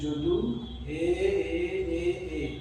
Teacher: এবার সা রে, পদ্মাবতী মাঝি একটা মানিক বন্দ্যোপাধ্যায়ের একটা উপন্যাস সেখানে আছে যদু হে, এই যে যদু হে এ এ এ এরকম যাচ্ছে, এটাকে বলা হচ্ছে প্লুতস্বর। এটা স্বরকে যখন টেনে উচ্চারিত করা হয় তাকে বলা হচ্ছে প্লুতস্বর।